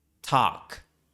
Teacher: este diptongo AU se convirtió en el monoptongo A. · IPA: [tɑk]